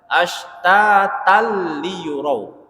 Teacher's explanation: Awal katanya ashtatan, tapi ketika dia masukkan di idgham bila gunnah jadi ashtatal tanpa dengung.